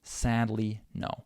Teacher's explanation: because it's just 1 syllable in between these 2 stressed syllables, we don't have a lot of reduction. We don't reduce that syllable too much.